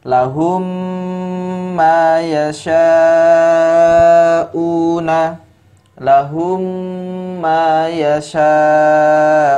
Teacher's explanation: memasukkan huruf mim kepada huruf setelahnya ya dengan cara apa di dengungkan · Di sini ada mim sukun bertemu dengan huruf mim. Maka dibaca dengan memasukkan ya huruf mim sebelumnya kepada mim selanjutnya dan dibaca 2 harokat ya. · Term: idgham mimi